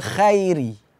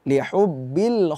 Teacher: huruf ko itu dibaca tebal